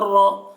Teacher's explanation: را کے اوپر زبر ہے، اس لیے را کو پر پڑھیں گے